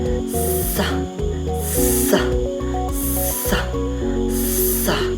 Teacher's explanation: Ang letrang S sa paraan ng pasutsot na walang tunog sa puntong panggilagid